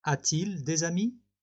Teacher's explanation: So again, we're swapping the verb and the subject, but because of the two vowels, we have to add a t in between to facilitate the pronunciation